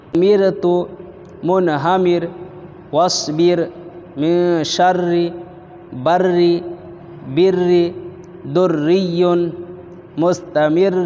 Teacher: را ساکن اس سے پہلے زیر ہے اس لیے یہاں باریک پڑھیں گے. اسی طرح منہمر را ساکن اس سے پہلے زیر ہے را ساکن اس سے پہلے زیر ہے باریک پڑھیں گے.